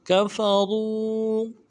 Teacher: موٹا کریں گے، را کے پیش کو واو کے ساتھ ملانا ہے، واو مدہ ایک الف دال میں کھینچیں گے